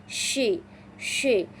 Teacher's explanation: sifat huruf syin yang menyebarkan suara hingga membentur dinding mulut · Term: tafasyi, tafashi